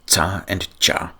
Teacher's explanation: Two Slavic sounds that there was no Greek letter for were the unvoiced affricates, tsa and cha.